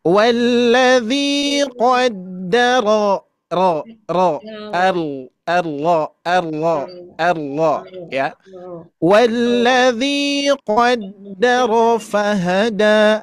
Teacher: Apalagi huruf ro ini ketika berharakat fathah itu dibaca tebal.